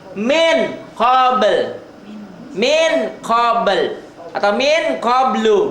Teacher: nun mati atau tanwin bertemu dengan kaf dan qaf, ang-nya banget ya, samarnya banget. Setiap nun mati atau tanwin berhadapan dengan kaf dan qaf, ang banyak berubahnya banget ang-nya.